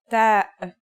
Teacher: The pronunciation is like the English T, except you should release your breath with a strong burst of air.